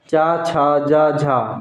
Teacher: चा, छा, जा, झा ये कैसे व्यंजन है? स्पर्श और संघर्षी व्यंजन है